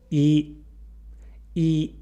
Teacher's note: when we say E, our tongue is high and forward in our mouth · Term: high front vowel